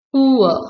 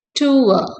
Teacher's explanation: the diphthong begins with high back rounded vowel and glides towards a mid central vowel, producing a smooth transition.